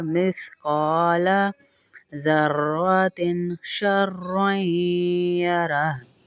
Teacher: क़ाफ को इसलिए खींच रहे हैं, अलिफ मद्दा है साथ इसके, जो ऊपर से हम जैसे खींचते आ रहे हैं थोड़ा सा लंबा करेंगे, एक अलिफ बराबर.